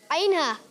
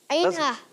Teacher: عین اور ہا ادا ہوتے ہیں حلق کے درمیان والے حصے سے